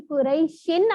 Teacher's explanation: شن نون کی آواز آ رہی ہے, تو اس لیے اس کا نام نون تنوین ہے